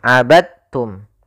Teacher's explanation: diidghamkan dalnya kepada huruf ta sehingga dibaca dengan huruf ta-nya langsung.